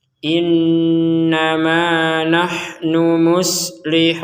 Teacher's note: Jangan sekedar inna. Harus ada dengungnya. Nah, ditekan kemudian didengungkan.